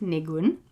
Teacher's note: So that's kind of two clear syllables, and the stress is on the second